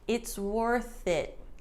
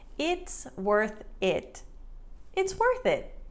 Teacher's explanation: we swoosh it all together and it sounds like one linked word